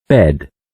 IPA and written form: bed (Bed)